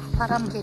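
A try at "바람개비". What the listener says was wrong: パ ラ ム ゲ リ 、 ゲ リ じ ゃ な く て ケ ビ 、 ケ ビ 、 ケ ビ 、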